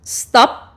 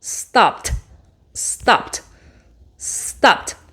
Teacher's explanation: El sonido final no activa nuestras cuerdas. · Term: sonido sordo